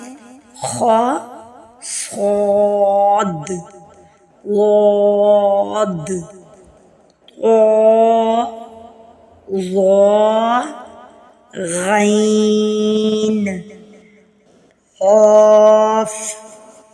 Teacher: یہ 7 حروف ہیں، یہ ایسے حروف ہیں جو ہمیشہ موٹے اور پر ادا کیے جائیں گے، یعنی کہ منہ بھر کے آواز آئے گی ان کی، خواہ ان کے نیچے زیر آ جائے یا زبر آ جائے یا پیش آ جائے، یہ حروف ہمیشہ موٹے پڑے جائیں گے۔ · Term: حروف مستعلیہ